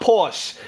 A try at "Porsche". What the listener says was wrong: The word is Porsche. The E you pronounce. You pronounce E.